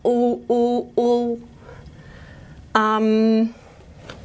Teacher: And now we've got our back unrounded vowel, U, U, U. And it's and that's not palatal, that's actually velar now.